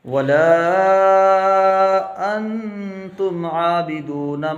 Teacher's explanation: انتم اخفا ہو جائے گا کیونکہ نون ساکن کے بعد تا ہے، حروف اخفا کے 15 حرفوں میں سے۔